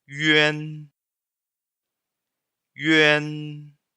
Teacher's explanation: YU é o som do U com trema, certo? Que é o som da vogal I fazendo um biquinho. Então, o fonema fica yuan, yuan.